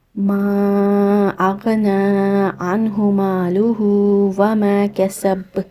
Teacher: یہ مد جائز منفصل ہے، اس کو آپ نے 4 سے 5 حرکہ لمبا کر کے ادا کرنا ہے